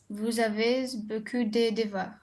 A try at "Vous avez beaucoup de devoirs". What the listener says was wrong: Vous avez beaucoup de devoirs, on ne lit pas le Z.